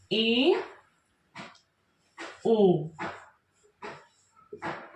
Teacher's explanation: अधिक खुलेगा तो इसमें जो स्वर आएंगे वे होंगे ए ओ अर्ध संवृत में संवृत की अपेक्षा थोड़ा सा अधिक मुख खुलेगा